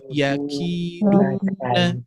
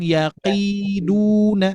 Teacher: Kalau huruf kaf di antara lunak dan keras. Jadi, jangan sampai yaqiduna.